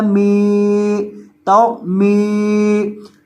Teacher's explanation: अब मीम के बाद या साकिन है तो मीम को लंबा करेंगे क्योंकि इसके बाद या मद्दा है, मीम ज़ेर या मी, तो मी।